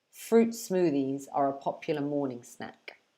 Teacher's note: when we're speaking quickly we kind of drop the t sound at the end of fruit